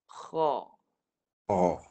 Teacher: Kalau huruf kha ni, dia gunakan suara dan nafas. Nafas sekali. Kha. Jangan lupa, pangkal lidah naik sekali. · Hujung halqum ni. Ni ditekan suara di permulaan kerongkong hampir ke anak tekak. Ini kata ditekan suara pada permulaan kerongkong.